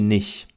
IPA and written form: nɪç (nicht)